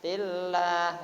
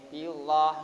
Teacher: Pasti lam jalalah itu dibaca tarkik atau tipis.